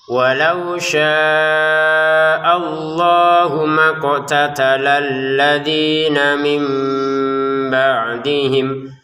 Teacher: Walau syaa di sini kita baca lima harakat kemudian allahnya dua harakat